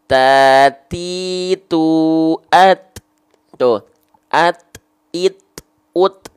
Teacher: Ini kita punya gigi seri atas. Nah, bukan ditempelin ke giginya, bukan, tapi ke gusi tempat tumbuhnya. Ke gusi tempat tumbuhnya gigi seri atas kita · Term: huruf ta